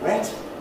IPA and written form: wet (wet)